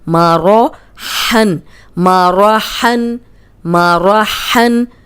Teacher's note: اب را کو موٹا رکھیں گے کیونکہ زبر آ گئی ہے